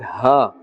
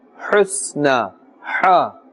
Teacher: This ha, the makhraj of it is from the center of the throat, it has a very thin sound.